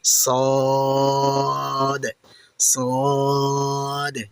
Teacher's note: সদ সদ সাধারণ সিনের মত পাতলা করে কিন্তু হবে না মনে রাখবেন সাধারণ সিনের মত পাতলা করে কিন্তু হবে না বুক থেকে আওয়াজ এনে মোটা করে বলতে হবে